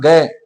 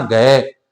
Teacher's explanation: अभ्यास करके देखना एक तो बोलना ग और एक बोलना घ तो ग की अपेक्षा घ का जब उच्चारण किया जाता है तो स्वास की मात्रा अधिक खर्च होती है